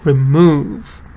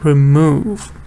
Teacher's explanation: Move is the important word. So stress is on move. Move actually has meaning alone.